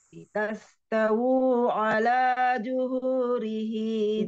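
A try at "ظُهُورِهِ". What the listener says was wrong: zuhu. Bukan juhu. Zuhu.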